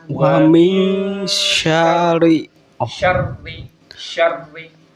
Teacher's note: Shinnya ketemu dengan ro bertasydid. Jadi langsung masuk ke ro. Wa min dan sya-nya tidak panjang.